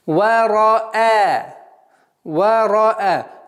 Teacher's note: Ра твердая, хамза мягкая у нас.